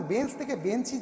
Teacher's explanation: এই যে এটা তো ইকার তো আমাদের শেষে ছিল না, বেঞ্চ তো হস চিহ্ন দিয়ে শেষ ছিল, কিন্তু বেঞ্চের ক্ষেত্রে নতুন একটি স্বরধ্বনির আগম ঘটলো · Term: অন্তঃস্বরাগম